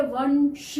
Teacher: अब वंश है, वंश श जो आ रहा है वो इसमें से नहीं है कोई भी वर्ण, लेकिन इसकी साउंड जो है वंश श जब हम बोल रहे हैं तो दांतों के पीछे से हवा बाहर को निकलती है, तब वो श निकलता है। तो यानी कि इसका जो अनुस्वार होगा वो भी दांतों के पीछे से टच होके आ रहा है, इसलिए वंश, तो न की साउंड आ रही है, इसलिए यहाँ पर भी आएगा वंश।